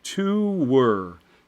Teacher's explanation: you inherently create a syllable break and actually end up with a little intrusive W